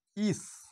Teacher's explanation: যেমন ধরো আমি একটা শব্দ লিখছি ইস, এই ইসটাকে তোমরা উচ্চারণ করো ইস। এই যে শীষটা কিন্তু অনেকটা ধরে আমি প্রলম্বিত করতে পারি বা বাড়িয়ে নিয়ে যেতে পারি এর স্বরটাকে। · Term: শীষ ধ্বনি